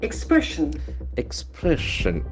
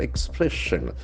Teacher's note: The accent for second syllable, expression.